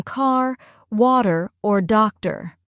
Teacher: And don't forget about the R sounds. They're much stronger and more pronounced in American English